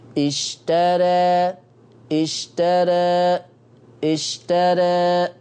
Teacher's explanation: لا أنا عايز تقليل، الفتحة تخف شوية، واتجاه الفتح بتاعي يبقى فيه نحول، يجي بالأفقي ما يجيش عمودي